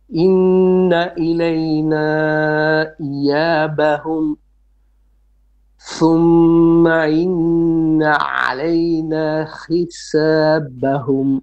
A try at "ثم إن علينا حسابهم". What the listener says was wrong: Don't merge thumma and inna together. You said thumma inna, main. No, thumma. You kind of make ma clear and then inna clear. Thumma inna.